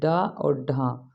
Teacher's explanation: उछला हुआ मतलब फेंका हुआ जिन वाक्यों के व्यंजनों के आध जीभ का अग्र भाग मूर्धा को स्पर्श करके झटके से वापस आ जाए तो उसे उचि वर्ण कहते हैं ड और ढ मतलब यहां